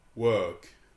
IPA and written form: wɔːk (walk)